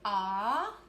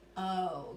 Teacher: short O is what? Ah, and long and strong O is O